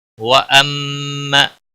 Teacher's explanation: میم مشدد پر غنہ ہوگا، تشدید والے حرف کو سختی کے ساتھ ادا کریں گے